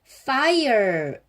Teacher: 여기서 ire 소리가 좀 다르죠. 중간에 슈와 소리인 어가 붙었죠